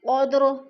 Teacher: قدر پہ قلقلہ ہو رہا ہے، دال کو ہلا کے پڑھنا ہے